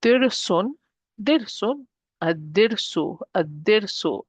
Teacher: I'm not pronouncing the lam and I'm dropping one of the dhammas at the end.